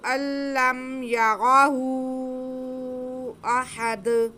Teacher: مد منفصل، یعنی کہ پہلے لفظ کے آخر میں حرف مدہ یا الٹا پیش اور دوسرے حرف کے شروع میں حمزہ۔ تو یہاں پہ ہمارے پاس مد منفصل ہوگی، جو کہ ہم 4 الف کے برابر کھینچ کے پڑھتے ہیں۔ اس کے بعد دال ساکن ہوگا تو دال پہ قلقلہ ہوگا۔